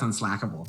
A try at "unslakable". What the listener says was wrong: Unslackable would be a UNSLACK.